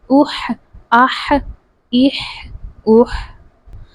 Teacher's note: جو ہا ہے وہ حلق کے درمیان والے حصے سے ادا ہوتا ہے